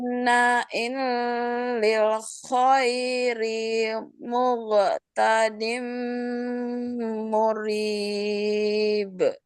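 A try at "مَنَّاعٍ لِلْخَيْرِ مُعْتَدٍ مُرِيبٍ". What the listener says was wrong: Bagus, tapi ini huruf ain lagi, bukan ghain.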